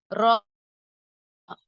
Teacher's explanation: நுனி நாவின் மேல் பகுதி மேல்முரசை ஈரை தொட்டு விலகும் போது உண்டாகிறது